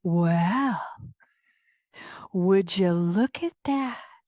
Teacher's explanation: I have to get a little breathy. I have to emphasize the word well. Well, almost kind of like a fairy tale witch.